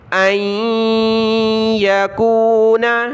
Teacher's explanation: نون ساکن کی وجہ سے ہم نے ناک میں آواز پیدا کرنی ہے